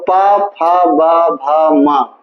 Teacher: इनका उच्चारण स्थान ओष है